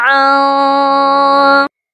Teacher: اس نون ساکن پر آواز کو اپنی ناک میں چھپا کر غنہ کرنا ہے، آواز آپ کی ناک میں چھپنی چاہیے۔ عن، ایسے نون کی آواز پراپرلی آپ نے پروناؤنس نہیں کرنی، پراپرلی ادا نہیں کرنی، بلکہ اخفا کرنا ہے یعنی کہ چھپا ہوا غنہ کرنا ہے۔